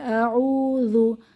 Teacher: জাল হচ্ছে কি সফট লেটার জিহবার আগা দাঁতের আগা নরম আওয়াজ · হামজা জবর আইন ওয়াও পেশ এটা মাদের হরফ পেশের বাম পাশে জমা ওয়াও মাদের হরফ এক আলিফ টেনে পড়বো